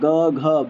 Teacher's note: बोल के देखो तो कंठ से आवाज आ रही है सीधा ना ओठ का इस्तेमाल हो रहा है ना टंग कहीं स्पर्श हो रही है टच हो रही है